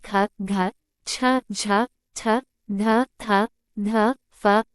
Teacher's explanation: महाप्राण व्यंजनों के उच्चारण में आकार जैसी ध्वनि विशेष रूप से रहती है और श्वास अधिक मात्रा में निकलती है।